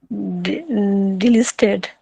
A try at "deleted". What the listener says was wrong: No, there's no L in there. So if you break the word down into small parts, so I'll show you what I mean. So if you break it down into small parts like that, so debt.